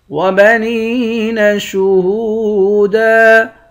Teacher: نون کو یا کے ساتھ ملا کر یا کو ایک الف کے مقدار کھینچ کر پڑھیں گے، یا حروف مدہ ہے۔ ہا کو بھی واو کے ساتھ ملا کر ایک الف کے مقدار کھینچیں گے، واو حروف مدہ ہے۔